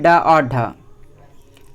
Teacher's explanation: जो मूर्धा होता है वह उठकर स्पर्श करता है और फिर झटके के साथ नीचे आ जाता है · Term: उत्क्षिप्त व्यंजन